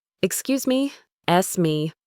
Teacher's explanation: The first two words are "excuse me." When we say this quickly, the S sound at the end of excuse often links to the M sound in me. It's not two separate words.